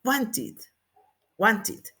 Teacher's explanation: Como el sonido final es want en T, pues la ID la vamos a pronunciar como it